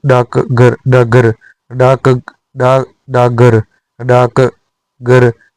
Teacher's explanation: घ घोष ध्वनि के कारण क अघोष का घोषीकरण हो गया, क से ग